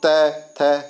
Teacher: दांतों से टकराती है जीभ, तो दंत से उच्चारित है